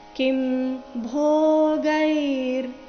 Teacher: ಇಲ್ಲಿ ಭೋ ಮಹಾಪ್ರಾಣ ದೀರ್ಘ ಮುಂದೆ ಗೈ ಇದೆ. ಗೈ ಆದ ನಂತರ ಅರ್ಧರಕಾರ.